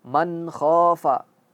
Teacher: Ketika nun mati bertemu dengan kha, dia harus jelas. Man khafa. Tidak ada ikhfa, tidak ada idgham.